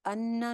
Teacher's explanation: नून शद के ऊपर गुन्ना हो जाएगा